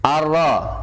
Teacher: Nunnya hilang karena nun sukun bertemu roh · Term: idgham bila guna